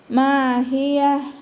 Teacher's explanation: മീമിൻ്റെ കൂടെ അലിഫ് മദ് വന്നു, 2 കൗണ്ട് നീട്ടിക്കൊടുക്കുക. ഹ തൊണ്ടയുടെ അവസാന ഭാഗം അക്സൽ ഹൽക്ക്, അപ്പോൾ അതിൻ്റെ സൗണ്ട് ക്ലിയർ ആക്കി കൊടുക്കുക, ഹംസയായി പോവരുത്